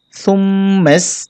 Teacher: মিমে গুণা করতে হবে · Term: ওয়াজিব গুণা